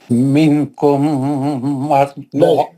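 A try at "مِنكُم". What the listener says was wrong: نون کا اخفا کر کے پڑھیے. منکم نہیں ہے وہ. کیا ہم کریں, آپ پڑھنا شروع کرتے اخفا چھوڑ دیا آپ.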